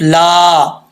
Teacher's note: لام کے آگے الف ہے، ایک الف کی مقدار اس کو لمبا کریں گے